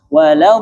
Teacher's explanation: Jadi lam bertasydid dalam Al-Fatihah itu jangan panjang.